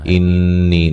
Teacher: نون مشدد پہ غنہ ضروری ہے